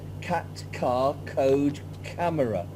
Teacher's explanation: Now we've got a hard C. It's not like an S. This is like a K in the back of your throat. So cat. Cat.